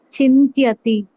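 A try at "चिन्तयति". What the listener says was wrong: No. Chinta okay. Chintayati. Chintayati is okay. If push were there in this category, it will become aya will be there. Just this is the difference making factor. All the rest is same.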